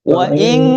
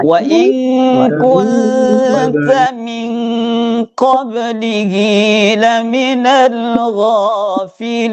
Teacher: Ikhfa-nya itu dua ketukan, langsung dengunnya itu masuk ke hidung. Namanya khasyum.